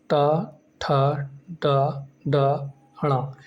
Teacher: इनका जो उच्चारण स्थान है वो आपका मूर्धा होता है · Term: टा वर्ग